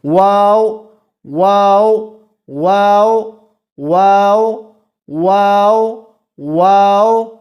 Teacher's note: دونوں ہونٹوں کے گول ہونے سے واو ادا ہوتا ہے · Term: حرف شفوی